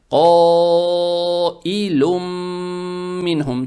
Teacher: Значит, это мад муттасиль, как вот в этом случае. Поэтому волнистый знак, опять же, говорит о том, что эту фатху над буквой Каф надо тянуть дольше обычного. Обычно, если мы тянем в 2 шота, тут тянем 4 раза или в 4 шота.